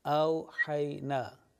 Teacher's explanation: The ha, it's pronounced from the top of the throat